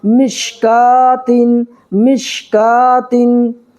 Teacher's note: میم شین زیر مش، کاف کھڑا زبر کا، مشکا، تا دو زیر تین، مشکاتن، یہاں پر بھی کھڑا زبر ہے، ٹھیک ہے، کھڑا زبر برابر ہوتا ہے الف مدہ کے، الف مدہ کو ایک الف برابر کھینچ کر کے پڑھنا ہے، یعنی ایک سیکنڈ کھینچنا ہے